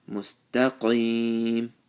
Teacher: So ihdinas, and these 3 letters sad, ra, and ta, this should be pronounced with full mouth. Mustaqim, qaf with the full mouth, and ya sakin with the zer before it.